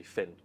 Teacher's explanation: for people who do what we call TH fronting, you have a f sound for words like thin